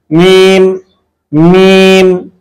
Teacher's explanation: মিম এটা হচ্ছে দুই ঠোটের শুকনা জায়গা থেকে উচ্চারণ করতে হবে। মিম মিম এভাবে সুন্দরভাবে আপনারা উচ্চারণ করতে পারবেন।